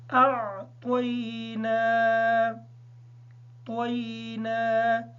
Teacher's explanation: نون پہ کھڑی زبر ہونے کی وجہ سے اس کو نون کو تھوڑا سا لمبا کر کے پڑھیں گے